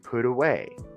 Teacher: we have to pronounce the T between two vowels like an R